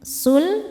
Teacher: Lam sukun tidak menghadapi lam ataupun ro. Maka lam dibaca dengan jelas. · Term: lam mutlak